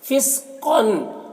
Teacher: قاف کو پر پڑھیں گے، یہ حروف مستعلیہ میں سے ہے اور تنوین میں اظہار حقیقی ہوگا، اسے جلد پڑھنا۔